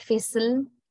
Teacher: Fizzle, no vowels. The word ends with l, which is a lateral or liquid, right? So there we say, we identify l has a syllabic function, although l is not a vowel sound.